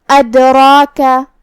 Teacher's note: ہم را کو اور مد الف کو دونوں کو تفخیم سے مطلب بھاری آواز میں ادا کریں گے